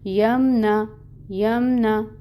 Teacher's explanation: نون کی حرکت کو بھی لمبا نہیں کرنا، 1 کاؤنٹ پڑھیں گے